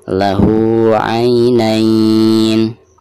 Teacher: Ketika membaca hadomirnya di sini dipanjangkan 2 harokat karena dihukumi mad silah qasiroh ya.